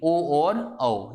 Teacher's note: इसके बाद कंठ और तालु, इन दोनों की योग से ध्वनि निकली थी, इसका नाम था कंठ तालव्य ध्वनि, ए और ऐ। इसी प्रकार कंठ और ओष्ठ, इन दोनों के योग से एक ध्वनि बनती है जिसे बोलते हैं कंठोष्ठीय ध्वनि